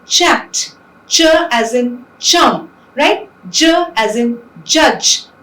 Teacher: there is this slow release of air with audible friction. And we have ch and j, which are the affricates in English.